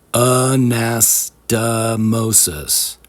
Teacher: The fourth syllable mo has a vowel O pronounced the same as in the word open. The first and third syllables have different vowels A and O, but both are pronounced like the A in the word about, which is a neutral, unstressed, relaxed vowel sound called a schwa.